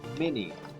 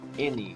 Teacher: in many regions, words like any and mini are pronounced with sounds that sound more like a short E.